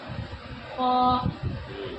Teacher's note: خا کا مخرج ادنائے حلق یعنی حلق کا منہ کی طرف والا حصہ